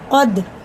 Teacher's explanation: قد یعنی دال میں ہے قلقلہ، بڑا قاف ہے.